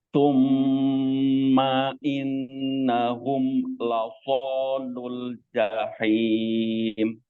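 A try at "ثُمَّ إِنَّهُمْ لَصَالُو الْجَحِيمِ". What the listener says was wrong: Nah, di sini jangan dijeda ya, Pak. Summa in ma in nah, itu. Disambung aja summa i. Nah, jangan summa inna. Nah, jangan dijeda-jeda ya. Termasuk tadi di sini juga iya terjeda hum la so. Nah, hum la. Nah, jadi tawasud itu seperti itu. Hum la, bukan hum la. Nah, kalau begitu dia jadi syiddah ya.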